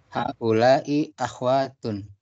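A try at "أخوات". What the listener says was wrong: Haula'i akhawatun. Nah, akhawatun. akhawatun, bukan akhwat ya, akhawatun. Haula'i akhawatun.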